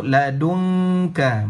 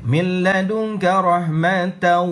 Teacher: kita tak sebut nun itu dengan jelas. Kita sebut ladunka. Bersedia lidah kita duduk pada makhraj huruf kaf. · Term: ikhfa hakiki